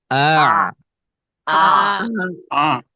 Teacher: Ain dari tengah tenggorokan